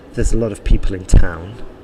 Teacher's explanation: the stress there was probably in people and in town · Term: sentence stress